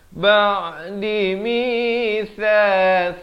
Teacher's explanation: Ba'di mithal, tha di hujung lidah. Tha hujung lidah tu keluar di antara 2 gigi.